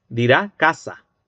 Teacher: hay hablantes que eliden por completo la realización del fricativo alveolar sordo al final de palabra. Entonces, en lugar de decir casas o casa, dirá casa, con esa S aspirada, elidida por completo al final. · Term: cero fonético